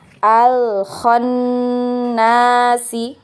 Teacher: huruf nun yang bertasydid ya. Itu wajib gunnah. Jadi dia wajib gunnah atau wajib didengung ya. Didengung, kemudian tempo dengung atau gunnahnya itu 2 harokat ya.